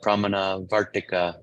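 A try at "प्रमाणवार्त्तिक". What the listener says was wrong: No, you got, I want to hear your long A's.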